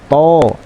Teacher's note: toh ini tebal letaknya dimana letaknya sama dengan huruf ta yaitu ujung lidah kita menempel pada pangkal gigi seri atas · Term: huruf tho